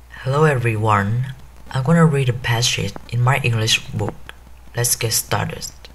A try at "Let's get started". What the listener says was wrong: Hơi bị nhiều S. Let's get started. Hơi bị nhiều S.